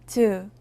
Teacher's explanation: 즈는 드 소리와 스 소리를내는 방식을 합쳐서내는 소리입니다 영어의 치와 비슷한 무성음이지만 네에 따라 유성음 제 소리와 비슷해요 즈는